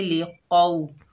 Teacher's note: कौफ के ऊपर ज़बर है, आगे वाव साकिन है, कौफ को वाव साकिना से मिलाएंगे, ये वाव लीन है, इसे नरमी और जल्दी से अदा करेंगे। कौफ मोटा हरूफ है, मोटा अदा होगा, जैसे ली कौ।